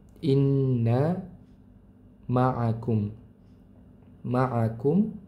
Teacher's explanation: Mim sukun bertemu dengan hamzah maka dibaca izhar mimnya.